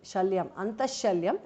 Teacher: Antaha Visarga changes to Sh